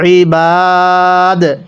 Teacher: ওয়াকফ করলে বিল ইবাদ। কলকলা করব, দালে যদি সাকিন হয় কলকলা করে পড়তে হয়। ওয়াকফের কারণে দালের নিচে জেরকে বাদ দিয়ে সাকিন দিয়ে পড়ব, বিল ইবাদ।